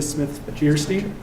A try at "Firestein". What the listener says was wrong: Firestein. Fire, not fear.